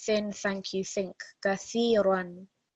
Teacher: if you imagine the words in English, thin, think, thank you, that very soft th sound, it needs to be different to seen.